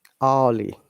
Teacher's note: In early, the R sound should be silent in British English.